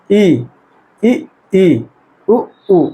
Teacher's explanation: मुंह बिल्कुल नहीं खुलता, मुंह बिल्कुल नहीं खुलेगा, लगभग बंद रहेगा मुंह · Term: समृत, समृद्ध